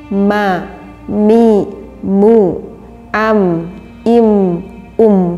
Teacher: makhrajnya mim keluar dari bainas syafatain, artinya di antara dua bibir kita, ma, mi, mu, am, im, um, sehingga berhubungan di dalam pengucapan mim dengan dua bibir kita, ya.